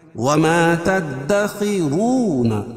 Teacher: واو ساکن سے پہلے پیش ہو تو مدہ ہوتا ہے، اس کو ایک الف کے برابر کھینچ کے پڑھیں گے. وما تدخرون فی یا مدہ بیو و مدہ تکم. · خا کو پور پڑھیں گے اور را پور پڑھی جائے گی، کیوں؟ را کے اوپر زبر یہ پیش ہو تو را پور پڑھی جاتی ہے اور واو ساکن سے پہلے پیش ہو تو مدہ ہوتا ہے، اس کو ایک الف کے برابر کھینچ کے پڑھیں گے.